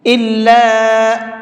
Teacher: یہاں پر چھوٹا مد ہے تو اس کو بھی 1 سے 3 الف کی برابر کھینچ کر کے پڑھیں گے